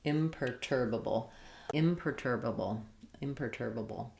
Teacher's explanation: Stressing on the tur syllable.